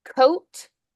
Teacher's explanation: Now the C unvoiced, the O voiced, T unvoiced